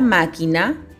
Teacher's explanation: La mayor fuerza de voz está en ma.